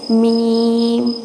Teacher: میم بھی ہونٹوں سے پڑھتے ہیں، اور میم پڑھتے وقت دونوں ہونٹوں کے جو خشکی والے حصے ہیں یعنی جو ظاہری حصے ہیں وہ ملتے ہیں